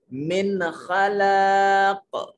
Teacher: नून साकिन है और खा, ये हरूफ हलकी में से है, यहाँ नून को जाहिर करके पढ़ेंगे